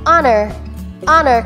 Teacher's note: first syllable is ah and the second syllable is nur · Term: silent h